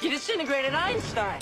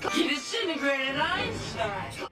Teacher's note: So it's not disintegrate, it's disintegrate. It reduces from 4 to just 3 syllables, and the first T sound disappears.